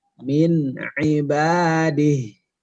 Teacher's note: Nun matinya dan tanwinnya dibaca jelas, jangan ming.